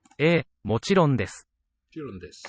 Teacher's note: The u in desu tends to be whispered or just be inaudible.